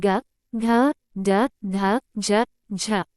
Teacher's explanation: सघोष वे वर्ण हैं जिनमें स्वर तंत्री में कंपन होता है